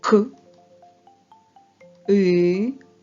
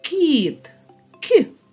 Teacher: звук і пом'якшує твердий приголосний робить його м'яким приголосним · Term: М'який приголосний